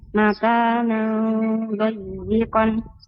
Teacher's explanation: نون تنوين بالفتح مخفى عند الضاد مفتوحة بغنى حركتين